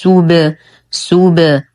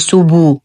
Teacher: نقلقل الباء بالرجوع عن الضم